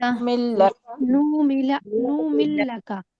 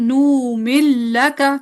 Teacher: نون کا لام میں امام سوسی کا ادغام ہے